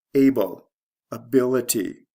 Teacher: the stress shift is from the first to second